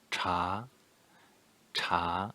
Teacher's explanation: second tone rising tone